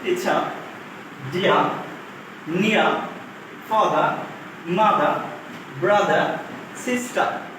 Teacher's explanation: কোন ওয়ার্ডে ভাওয়ালের পর আর থাকলে সাধারণত ওই আর উচ্চারণ হয় না